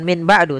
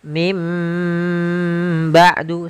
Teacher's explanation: bukan Min ba'du tapi mim ba'du sambil ditahan dengan gunahnya yaitu suara nunnya dirubah menjadi suara huruf mim jadi ikqlab itu merubah huruf suara huruf nun menjadi suara huruf